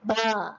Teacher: Okey kan, bertemu antara 2 bibir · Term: asy-syafatain